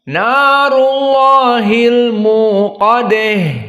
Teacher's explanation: Maka Al-Kisai membaca di akhirnya dengan al-imalah al-kubra dari ha at-ta'nis